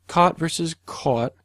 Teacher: on the west coast those are typically merged um so again all that is is a choice of vowel